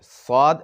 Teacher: সদের উচ্চারণ করার সময় ঠোঁটটি মুখটি একটু গুল ঠোঁট একটু গুল করতে হয়